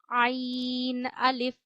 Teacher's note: ऐन भी गले के दरमियान से अदा किया जाता है।